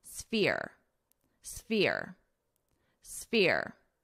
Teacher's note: But for your S, sphere, sphere. So you're going to hear the F more. The S is going to be quite quick.